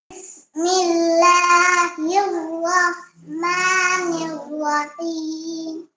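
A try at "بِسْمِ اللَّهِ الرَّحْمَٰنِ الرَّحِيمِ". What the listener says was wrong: হাটা সুন্দর হচ্ছে না। হাটাকে সুন্দর করে ধরতে হবে, মুখটা খোলা রাখতে হবে। বিসমিল্লাহির রাহ এভাবে খোলা রাখতে হবে। রহমানির রহিম। বাতাস বের করো, এই যে দেখো। রহ রহ মা রহ চাপ দিয়ে ধরে রাখো।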